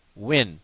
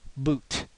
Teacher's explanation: the oo sound from W comes from lower within your throat area, whereas the oo sound from double O comes from higher up within the mouth